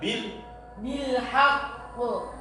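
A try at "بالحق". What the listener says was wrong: Nah, ini kurang pas pantulannya.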